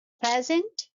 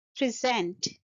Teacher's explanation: in present we are stressing the first syllable and in present we are stressing the second syllable